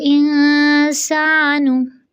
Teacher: proper होंठ गोल करके पेश की अदायगी, लेकिन याद रहे नून बारीक हरफ है तो ज़ुबान की जड़ तालु की जानब नहीं उठानी